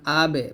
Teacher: দুই ঠোঁটে ভিজা জায়গা হতে বা উচ্চারিত হয়